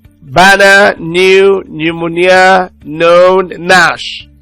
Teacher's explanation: It's a voiced alveolar nasal stop consonant sound.